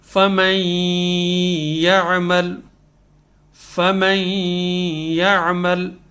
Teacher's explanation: نون سیدھا کس میں ملے گا، یا میں، یہاں ادغام ہو جائے گا نون کا